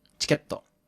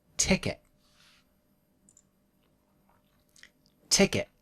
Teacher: Don't make a strong to sound. Instead, stop quickly at the end in your throat.